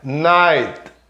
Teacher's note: o T é quase mudo também, né? Night, aquele T que é feito com a pontinha da língua encostando na pontinha do dente por trás.